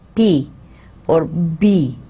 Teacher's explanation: with a slight explosion so the soft palate is raised and the air coming from our lungs into the mouth stops for some time we stop it and then it breaks the obstruction with a slight explosion · lips pressed together now the active articulator is the lower lip the lower lip is the active articulator the passive articulator is the upper lip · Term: Bolivia plosives